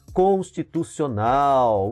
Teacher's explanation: O nau é pronunciado com maior intensidade, ela é uma oxítona.